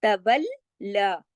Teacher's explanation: ما تولا، اب دیکھیے تولا، لام کھڑا زبر لا، تولا، لام کو 2 مرتبہ پڑھنا ہے تشدید کی وجہ سے اور ایک الف کے برابر کھینچنا بھی ہے